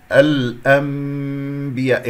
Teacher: إقلاب نون باء ميم صافية بدون كز لكي لا يتشوه الصوت